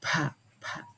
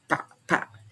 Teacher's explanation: We have the aspirated form, pa, pa. We can feel the puff of air that gets out of our mouth, and the pa, pa, the unaspirated form.